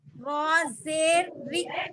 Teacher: देखिए रा के नीचे जेर आया ना, इसको बारीक पढ़ेंगे। पढ़ने में पहले रा होता रहेगा, जैसे ही उसके नीचे जेर आ गया तो वो बारीक हो जाता।